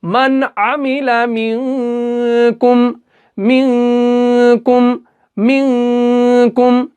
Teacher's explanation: मिन इसको हमने गुन्ना करके पढ़ा क्योंकि काफ आ रहा है नून साकिन के बाद